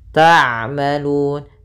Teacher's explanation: ain sifatnya bainiyah yaitu bainiyah, sifat bainiyah ya, di antara syiddah dan rokhawah. Syiddah tertahannya suara, kalau rokhawah mengalirnya suara, sehingga di antara keduanya.